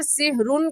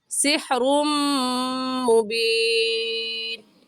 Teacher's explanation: یہاں پر سحرن کہنا غلط ہے اور صحیح ہے سحرم۔ تنوین کو میم کے ساتھ ملائیں گے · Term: ادغام